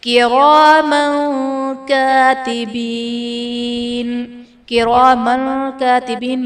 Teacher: کراما کاتبین، کراما کاتبین میں میم پر دو زبر کی تنوین، تنوین کے بعد حروف اخفا میں سے کاف ہے، تو یہاں پر اخفا کا قاعدہ ہوگا، یعنی تنوین میں ہم غنہ کر کے پڑھیں گے